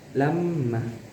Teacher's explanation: Disebut gunnah karena ada huruf mim yang ditasdid di situ, membacanya harus didengungkan. Dan mad iwadnya di sini karena ada huruf alif berharokat tanwin kemudian diwakafkan, panjangnya itu 2 harokat.